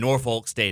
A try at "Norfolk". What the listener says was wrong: you really pronounced that L.